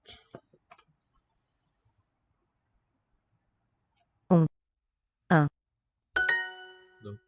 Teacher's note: Both nasalized, those sounds.